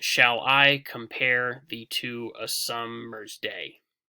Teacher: you can tell here that it's iambic because it's repeating this foot of an unstressed followed by a stressed. And if you count how many syllables are in the line, you'll see there are 10 syllables. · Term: iambic pentameter